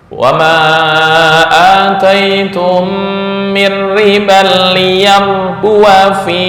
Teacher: Ketika wasol pendek, seolah-olah alif dibuang.